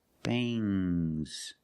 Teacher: When you have S after NG, it makes the nasal sound but it also makes a little G sound, but not a hard, strong G.